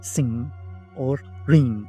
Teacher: Back of tongue against soft palate, and air passes through the nose, as in sing or ring.